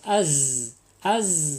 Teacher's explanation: Za ini sofir ya sofir di sifat sofir jadi agak mesis